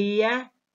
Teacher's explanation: is raised up in the mouth almost touching the hard palate yeah is a glide because it is produced with a quick smooth non-friction glide towards a following vowel now when we produce yeah there is no friction why because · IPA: / j /